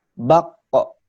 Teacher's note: Ketika dalam posisi sukun, huruf qaf itu memantul ya, dipantulkan kembali ke huruf ketika seperti saat huruf qaf itu dibaca.